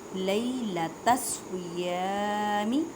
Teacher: یا ساکن سے پہلے زبر ہے تو یالین کریں, مینس کے نرمی سے پڑھیں